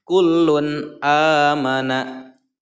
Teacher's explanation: Lun di sini kedengarannya jelas, lun akhirannya bunyinya bunyi n. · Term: idhar